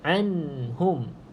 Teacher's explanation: ada nun yang mati. Jadi hati-hati, saya tak nak tuan-tuan dan puan baca dengan qalqalah